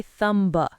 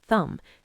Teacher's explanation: The M and B sounds are both made by closing your lips. It's much easier to just end on the M sound and not release the B. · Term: silent B